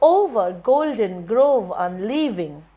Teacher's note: Gol is stress, den is unstress. Since it's a trisyllabic word, you may or may not give stress on the part grove.